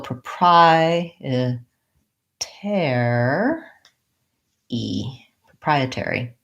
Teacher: still have the pressed first syllable so proprietary proprietary I have I think probably secondary stress on the air syllable because I do use a clear vowel there